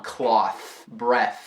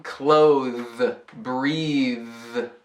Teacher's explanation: Nos substantivos cloth e breath, o TH não é vozeado não. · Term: TH não vozeada